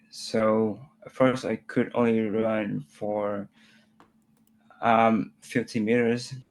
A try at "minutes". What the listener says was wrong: Okay, it doesn't sound like minutes, does it? I know it's 30 minutes because my brain can fill in the gap. To me, it sounds like 30 mirrors.